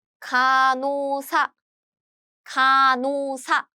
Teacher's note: 간, and here, they meet, and this sound is gone. This H sound is gone. So the pronunciation is 간호사, 간호사.